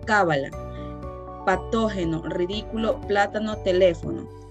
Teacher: Las palabras esdrújulas son las que tienen su acento en la antepenúltima sílaba. Cuando se acentúan siempre, es decir, contando por detrás la tercera sílaba, antepenúltima.